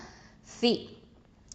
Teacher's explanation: இந்த ச வந்து தரஃபுல் லிசான் எழுத்து, நுனினாவ எழுத்து, மேல் முன்பற்கள் அந்த கீழே வச்சு சொல்லணும்.